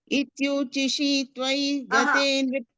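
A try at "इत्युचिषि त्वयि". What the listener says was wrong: Not chishi. It is not a dirgha. It is a hraswa. It's a short vowel sound. Chishi, not chishi. No, ityu chishi. Like chi, shi. Both same.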